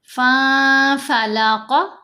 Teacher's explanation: قاف کو موٹا پڑھیں گے